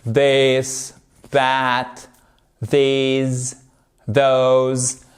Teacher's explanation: vous avez le même TH, vous faites vibrer les cordes de la gorge